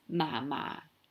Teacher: Two low tones, ma ma, will be your grandma on your dad's side.